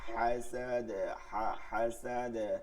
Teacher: এরপরে হাসাদে দালে কলকলা হইছে, আর ওয়াকাবে বাতে কলকলা হইছে।